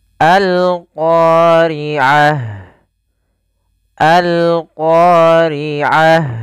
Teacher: alif lam yang kita tuliskan dan kita baca suara lamnya dengan jelas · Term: alif lam qamariyah